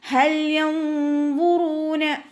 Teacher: വാവുമതും കൂടെ വന്നിട്ടുണ്ട്, 2 കൗണ്ട് നീട്ടിക്കൊടുക്കുക കേട്ടോ